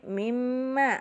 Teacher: hunah asli mim bertasydid. Dibaca sempurna hunahnya 2 sampai 3 ketukan. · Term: hunah musaddadah